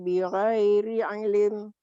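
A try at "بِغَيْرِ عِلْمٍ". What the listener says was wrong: Bigoiri ilm, bukan ilim. Kalau ilim berarti ada baris. Bigoiri ilm. Ilm.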